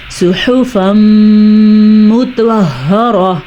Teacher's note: دو زبر کے بعد یمون میں سے غنے کے چار حروف میں سے ایک حرف میم آیا ہوا ہے تو یہاں بھی غنہ ہوگا